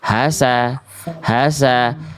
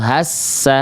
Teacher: enggak perlu ditekan sinnya enggak ada tasdidnya